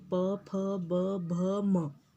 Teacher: पवर्ग में आपके दोनों होंठ एक दूसरे को स्पर्श करते हैं